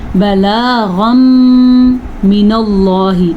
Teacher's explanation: نون تنوین کے بعد یمون میں سے میم آیا ہوا ہے تو یہاں پہ ادغام بالغنہ ہوگا